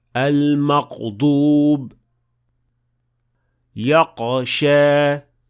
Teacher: the sound will stop and it will sound more like a qaf rather than ghain.